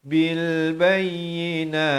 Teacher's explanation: dan ta itu dia ada bunyi hamas, bunyi angin di akhir